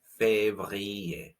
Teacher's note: The R sound comes from your throat. Février. It's very much a French R.